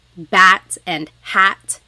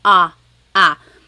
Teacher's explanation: So the letter A is more like an ah sound, ah, ah. And sometimes in English, the letter A is very short, like bat and hat. We don't want it flat like that. We want it more open